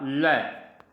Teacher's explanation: जब जीभ उल्टी हो जाती है और साइड से होकर जब हवा बाहर निकलती है तो होता है पार्श्विक व्यंजन